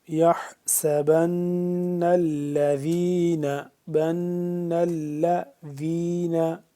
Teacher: نون جہاں پہ مشدد ہے اس پہ ہم نے غنہ کیا